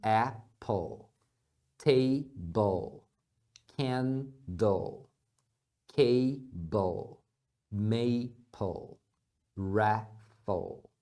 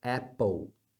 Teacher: Dark L é o som do L que eles fazem mais atrás aqui na garganta · não faça o ditongo ou porque é comum a gente fazer isso quando as palavras terminam em L em português